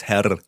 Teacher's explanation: in the south of germany you really roll the r